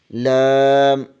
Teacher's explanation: زبان کے کنارے کی پشت اوپر والے دانتوں کے مسوڑوں سے لگے تو لام ادا ہوتا ہے